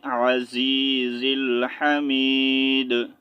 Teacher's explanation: اگر سٹاپ کریں گے تو دال کو ساکن کریں گے